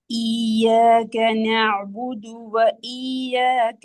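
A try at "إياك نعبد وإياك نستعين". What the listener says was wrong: யாக்குரிய சத்த உச்சரிக்கணும். இப்ப யௌமித்தீன் அர் ரஹ்மானிர் ரஹீம் என்று ரால தால்ல வரக்கூடிய சத்த நாங்க அழுத்தம் கொடுத்து உச்சரிக்கணும். அப்ப அதே போல யா என்ற எழுத்தினுடைய ஷத்து ஈயாக்க ஈயாக்க என்று ஓதக்கூடாது. ஷத்தல்.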